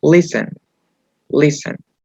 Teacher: la última sílaba es átona, que no va a ser acentuada